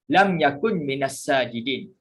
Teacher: Apabila nun mati bertemu dengan mim, idgham ma'al gunnah, maka dia berlaku idgham. Jadi dia tak letakkan baris mati, tetapi dia letakkan syaddah pada mim.